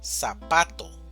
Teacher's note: Tenemos sa, pa, to. Entonces, ¿dónde hacemos mayor fuerza? En la sílaba pa, zapato. Si fuera en la primera sílaba sería zapato, o si fuera en la última sería zapato, pero no decimos ni zapato ni zapato, decimos zapato.